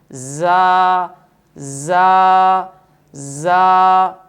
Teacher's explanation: صفت صفیر کی وجہ سے اس حرف کو ادا کرتے ہوئے سیٹی کی سی آواز آنی چاہیے، تیز آواز آنی چاہیے جسے سیٹی کی آواز کہتے ہیں، زا زا زا۔